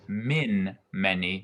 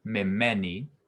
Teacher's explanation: from me and instead of min many we have me many so the noon drops out and becomes a dagesh